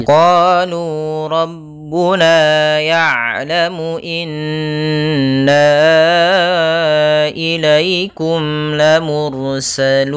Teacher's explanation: huruf qaf ada fathah bertemu dengan alif, maka qaf qa kita panjangkan 2 harakat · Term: mad tabi'i